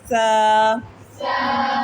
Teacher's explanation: नरम हरूफ। सा क्या है? नरम। इसकी सीटी नहीं निकालते।